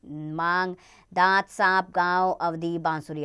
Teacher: अनुनासिक के उच्चारण में वायु नाक तथा मुख से एक साथ बाहर निकलती है, इसका चिन्ह चंद्र बिंदु है, जैसे मांग, दांत, सांप, गांव, अवधि, बांसुरी आदि।